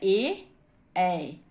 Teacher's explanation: कंठ तालव्य यानी कंठ भी और तालु भी